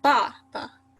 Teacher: it kind of sounds like you're mad, like your tone goes down. · And you can hear it in ba, ba. Like the first ba goes like, the tone goes down. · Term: fourth tone